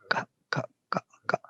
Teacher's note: It must touch one part. The little back tongue touches the soft palate.